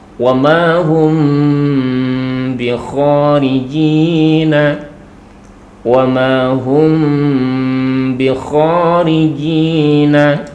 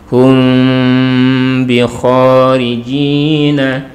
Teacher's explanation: tidak sampai terkatup untuk bibir kita. Jadi ada rongga, ada furjahnya. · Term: ikhfa syafawi